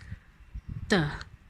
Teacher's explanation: t, pronounced with the front of the tongue